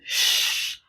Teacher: the voice the voiceless consonants on here this sound is pronounced the sound shh there's no vibration anywhere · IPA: /ʃ/